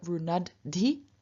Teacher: So here we have not just the N becoming retroflected to n, but also the voiced aspirate losing its aspiration. So from dh we get d.